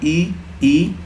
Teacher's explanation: जीभ का आगे वाला भाग यूज किया जा रहा है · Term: अग्र स्वर